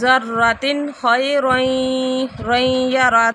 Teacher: کے ساتھ ادغام ہے، فمن يعمل مثقال ذرة خيرا يره، ذرة تنوین کے بعد خا آ رہا ہے، اظہار ہو رہا ہے